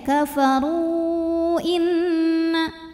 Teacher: bacanya ini boleh lebih dari dua, boleh 4 atau 5 harokat ya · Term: mad jaiz munfasil